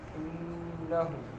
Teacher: ہا جو ہے حلق کے اس حصے سے جو سینے کے قریب ہے.